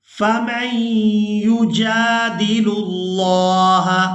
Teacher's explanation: میم کو یا مشدد کے ساتھ ملاتے ہوئے غنہ کے ساتھ ادا کریں گے،